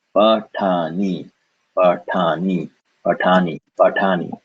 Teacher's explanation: Pa, no air, ta, air, ni